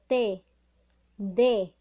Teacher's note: la punta de la lengua toca lo que es la pared posterior de los de los dientes